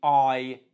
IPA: aɪ